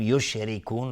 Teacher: را ترقیق است چون کسره داره. یشرکون مد عارض للسکون به مقدار 2 یا 4 یا 6 حرکت میتونیم مد بدیم.